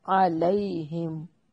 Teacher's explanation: मीम साकिन का इजहार है, गुन्ना नहीं करेंगे।